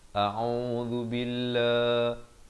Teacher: ain baris dhammah di pertengahan kerongkong 2 harakat.